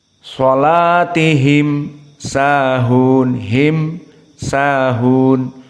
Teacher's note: karena mim dibaca dengan izhar bertemu dengan Sin maka izharnya syafawi dikatakan itu karena ahkamul mim dari syafah dari bibir sehingga bibirnya jelas di saat menyebutkan mim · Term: izhar asyafawi, idhar asy-syafawi